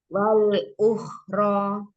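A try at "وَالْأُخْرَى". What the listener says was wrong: Umi, di huruf waw jangan wal lebih monyong. Tapi tipis. Karena kedengarannya beda ya, Mi. Kalau wa-nya nggak dimonyongin depannya, bunyinya jadi wa, beda bunyinya.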